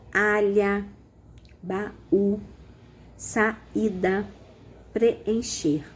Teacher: são duas vogais elas não podem ficar na mesma sílaba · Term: hiato